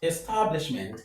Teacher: In number four, we have establishment. Establishment. The stress is on stab. · So, the stress is on the third syllable from the end of the word.